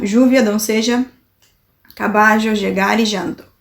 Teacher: Eu tento pronunciar com som mais parecido com DJ, tá?